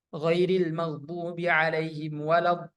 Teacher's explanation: Kita menaikkan sedikit nada kita, intonasi kita pada ketika kita berpindah dari mat itu, do, kemudian ke huruf yang bertasydid. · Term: nabar